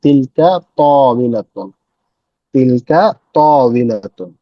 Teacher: ত এর পরে একটা টান হবে, ত হবে, ত একটু লম্বা টান হবে